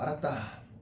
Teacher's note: 알았다 히읗이 탈락되겠죠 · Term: 히읗 탈락